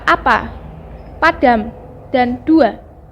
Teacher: fonem A dilafalkan dengan cara menarik lidah ke belakang dan ke bawah, disertai dengan menghembuskan udara keluar, sedangkan mulut dibuka lebar-lebar membundar.